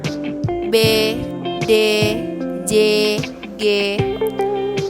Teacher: kontoid yang dibentuk dengan disertai bergetarnya pita suara disebut kontoid bersuara